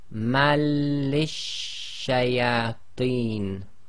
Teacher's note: So they've actually put the shadda in for us to show us the assimilations taking place, and it's one of the lar letters, so the assimilation takes place without nasalization, i.e. ghunna